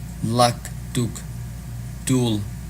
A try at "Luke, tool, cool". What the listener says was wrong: Yeah, I would say the ooh again. Luke, tool, cool. So lesson number 12, work on the longer vowel sound there.